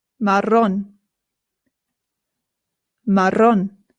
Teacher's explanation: The double R in Spanish is what rolls.